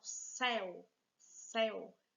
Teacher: Vê que o E está bem aberto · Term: vogal aberta